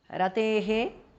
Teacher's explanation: visarga changes to upadhmaniya.